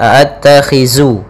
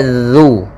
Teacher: Pada bacaan a'attakhidhu min dunih, hati-hati dalam pelafalan zal, jangan sampai terbaca dengan huruf zai, jangan dibaca a'attakhizu, tapi dia zu.